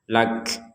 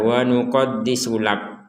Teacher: di akhir huruf kaf kita mengeluarkan nafas. Lak. Nah, kalau kita wakaf ya lak.